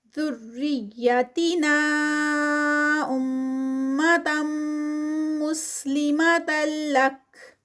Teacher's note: ذریتی نا پہ جو ہے وہ مد منفصل تو اس کا 4 کاؤنٹس کا اسٹریچ ہے